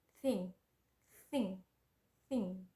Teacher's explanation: The sound is voiceless coronal fricative consonant, and the word for it is thing, thing, thing.